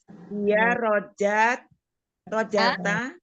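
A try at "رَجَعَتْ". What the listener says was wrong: A-nya kecil. Nggak usah pakai ta.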